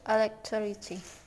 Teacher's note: Word stress on the third syllable.